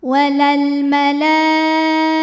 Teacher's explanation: alif lam qamariah karena alif lam menghadapi huruf qamariah yaitu mim maka lam sukun dibunyikan dengan jelas atau biasa disebut dengan izhar qamari